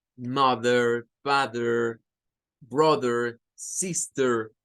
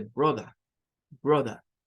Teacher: Es un inglés o una forma, un acento, digamos, del inglés en el cual se elimina la R y solo se hace sonar un schwa al final de las palabras. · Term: inglés no rótico